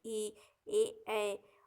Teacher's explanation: जो जीभ के आगे भाग से बोले जाते हैं उन्हें अग्र स्वर कहते हैं